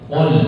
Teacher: Qaf itu pangkal lidah dengan langit-langit lunak. Qul bukan kul tapi qul. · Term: huruf qaf